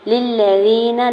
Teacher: لام کی زیر کو لام مشدد کے ساتھ ملاتے ہوئے لام کی زبر کو بغیر کھینچے ادا کریں گے